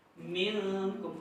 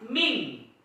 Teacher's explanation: maka nun mati itu dibaca sengau, seperti seolah di hidung. Minkum, bukan ming. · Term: ikhfa